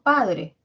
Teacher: el acento que está en padre, que está en la sílaba pa, aparece simultáneamente con la vocal A.